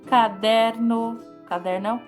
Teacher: o der né é uma sílaba que nós pronunciamos forte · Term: sílaba tônica